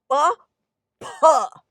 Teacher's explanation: Unlike English, where this aspiration is kind of limited, small burst of air, South Asian sounds are full on aspirated.